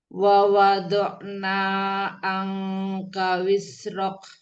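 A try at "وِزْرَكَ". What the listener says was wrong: Ya, jangan wis ya, Wiz. saya bukan sin ya, jangan wis tapi wiz. Wizrok. Wiznya alirkan dulu, baru pindah ke ro. Nanti latihan supaya pengucapan huruf zai tidak menyerupai sin ya. Bukan wisrok tapi wizrok gitu ya.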